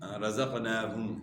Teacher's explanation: ہا کا مخرج گلے کے آخر سے، اور میم کا مخرج دونوں ہونٹوں کا خشکی والا حصہ · کھڑا زبر ہے نون کے اوپر تو آپ نے اس کو ایک الف کے مقدار کے برابر کھینچنا ہے۔ کھڑا زبر جو ہے الف مدہ کا قائم مقام ہوتا ہے، اور ہا کا مخرج جو ہے گلے کے آخر سے ہے، اور میم کا مخرج جو ہے دونوں ہونٹوں کا خشکی والا حصہ، اور یہاں جو ہے ہم پیش میں آپ نے ہونٹ گول کرنے ہیں۔